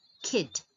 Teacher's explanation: It's not the letter name I, but E, kid, because it's closed by a consonant, and so the sound produced is short. The vowel produces short sound.